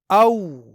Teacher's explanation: यह वाव हरफे लीन है क्योंकि यहां जबर के बाद वाव साकिन है यानी इस वाव को यहां नरमी के साथ पढ़ना है